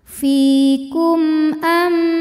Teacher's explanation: hadapannya bukan huruf mim bukan huruf ba di sini hurufnya Hamzah maka mim sukun kita bunyikan dengan jelas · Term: izhar syafawi